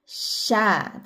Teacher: Huruf syin tidak menggunakan kedua bibir, hanya tengah lidah bertemu dengan langit-langit di atasnya.